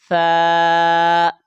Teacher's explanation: یہ سا بغیر سیٹی کی آواز کے ساتھ ادا ہوگا